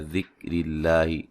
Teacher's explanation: را کو باریک پڑھیں گے، را کے نیچے زیر ہے ، لفظ اللہ کو باریک پڑھیں گے، اس سے پہلے زیر